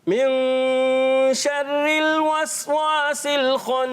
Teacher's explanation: وسواس میں سین کلیئر کریں گے سیٹی کے ساتھ · خناس پھر نون مشدد میں کیا کریں گے غنہ ایک الف کا غنہ